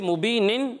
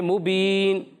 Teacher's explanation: اور اس کے بعد نون جو ہے وہ وقف کی وجہ سے ساکن ہو جائے گا